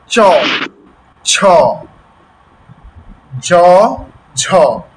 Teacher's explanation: ঘৃষ্ট বা ঘর্ষণজাত ধ্বনি। যেগুলো বলবার সময় আমাদের মুখে একটি ঘর্ষণ সৃষ্টি হয়। · এটাও ধনি স্পষ্ট ধ্বনির মতই অর্থাৎ স্পৃষ্ট ধ্বনি হবে আর কি ধ্বনির মতই ঠোটের পেছনে কিছুক্ষণের জন্য জমা হয়ে পরপরই বেরিয়ে যায় কিন্তু ফটকার মত সজরে না বের হয়ে ঘসা খায়